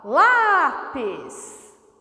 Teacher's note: a palavra lápis é paroxítona o lá é mais forte que o pês · O lá é mais forte que o pis. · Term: sílaba tônica